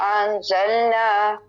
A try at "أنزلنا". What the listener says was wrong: أنزلنا پہ اخوا ہو رہا ہے أنزلنا حمزہ کے بعد الف نہیں بڑھائیں گے أنزلنا